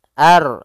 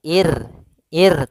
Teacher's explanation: Kalau ar itu tebal. Ir ir tipis.